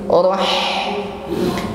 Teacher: ha sukun, lebih jelas di sini sifat hamas atau nafas yang mengalir.